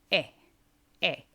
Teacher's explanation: it's similar to the long A sound in English, however, it's much shorter.